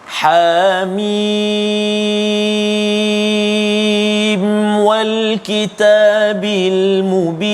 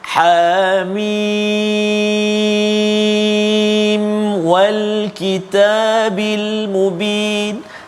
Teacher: Jadi perpindahan daripada mim kepada waw itu jangan dengung. Yang kita baca hamim, salah.